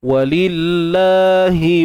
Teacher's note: Walillah, kalimah Allah ni baca nipis. Walillah, sebab sebelum dia baris bawah kan. So nipis.